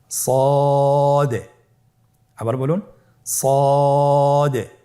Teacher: জিহ্বার আগা সামনের নিচের দুই দাঁতের পেট ও আগার সঙ্গে লাগিয়ে উচ্চারিত হয়।